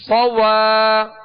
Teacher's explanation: صوا، صاد کو جب ادا کریں گے صاد پر زبر ہے بغیر کھینچے ادا کریں گے مگر ہونٹوں کو گول نہیں کریں گے، صاد کو پر پڑھیں گے، سیٹی کی آواز اس میں پیدا ہوگی